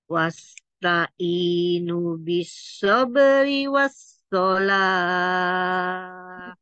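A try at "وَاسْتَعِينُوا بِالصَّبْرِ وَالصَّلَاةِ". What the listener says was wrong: Nunya panjang, wasta'inu bis.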